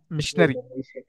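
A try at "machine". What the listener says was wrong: మెషిన్, మిషనరీ అనకూడదు. మెషిన్, మెషిన్ అన్న. మిషన్ కాదు. తెలుగు టైప్ లో ఉంటది. అది మెషిన్ అనాలి.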